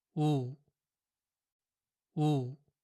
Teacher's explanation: in Korean, the sound oo is pronounced a little shorter than the English version · The U sound you hear in words like wood or food, and the sound of the letter U in words like June or blue, is written like this in Korean. But in Korean, the sound U is pronounced a little shorter than the English version.